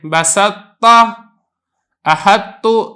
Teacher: جو تا ہے اس کی جو صفت اطباق ہے یہ باقی ہے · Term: ادغام ناقص